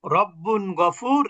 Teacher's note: তানবিনের মধ্যে নুনের উচ্চারণ পেলাম